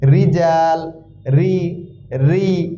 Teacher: র এর নিচে যখন জের থাকবে এই জের থাকবে তখন র কে আমরা বারিক বা পাতলা করে পড়বো রিজাল রি রি একটু পাতলা হবে উচ্চারণে একটু পাতলা হবে রিজালু